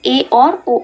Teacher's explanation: तो अर्धस्वर जब हम बोलते हैं उच्चारण में तो इसमें मुख द्वार कैसा होता था, कम हो जाता है। जब हम बोलते हैं तो हमारा मुंह ज़्यादा नहीं खुल पाता है।